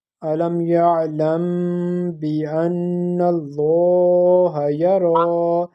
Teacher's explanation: The lam of isme jalalat would be pronounced in a thicker voice because there is a zabar before that lam of isme jalalat Allah. And the rule is when there is a zabar or pesh present before the lam of isme jalalat, we pronounce it in a thicker voice.